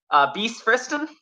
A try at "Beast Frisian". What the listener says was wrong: There's no T in my name. Yeah, it's Beast Frisian.